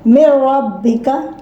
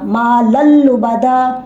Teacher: Idgham without gunna in lam and ra. After nun sakin and after nun tanween.